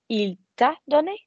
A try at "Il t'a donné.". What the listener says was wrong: Don't stress the middle, but yeah.